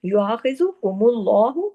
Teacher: अल्लाह के नाम में लाम को हैवी किया